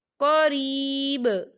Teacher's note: وقف کی صورت میں با ساکن ہو جائے گا اور یہاں پر قلقلہ ہوگا